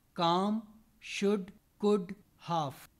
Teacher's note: in the rest 4, L is silent, whereas in cold or gold, L was pronounced.